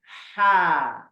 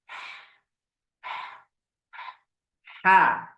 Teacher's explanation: Kalau ha terbuka mulutnya. Ha. Udaranya bebas keluar.